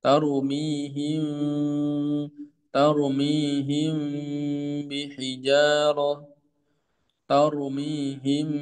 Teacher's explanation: Ya, makna dengan tetap membaca guna pada huruf pertama yaitu suara guna tetap bertahan pada huruf yang disembunyikan. Namun juga tidak bersama suara huruf yang disembunyikan di dekatnya. · ingat mimnya ada gunanya maka tetap terdengar suara gunanya dari rongga khayshum